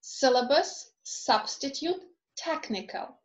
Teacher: the first syllable in these words is stressed